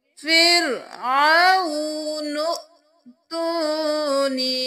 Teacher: آیت نمبر 79 میں دیکھ لیجئے، وَقَالَ فِرْعَوْنُ ائْتُونِی، یہاں پر ہم نون کے ساتھ حمزہ کو ملائیں گے، الف کو نہیں پڑھیں گے، جو حمزہ کے اوپر جزم ہے تو جھٹکا بھی دیں گے